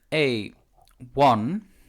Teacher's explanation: the o is not the first sound you make the first sound you make is w right so since we have the w sound in ipa you